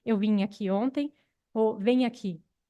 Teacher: Então, se tem vim, vem, vim termina com uma vogal nasal, vem termina com um ditongo nasal, mas se houver uma ressilabificação, a gente acaba com uma consoante nasal palatal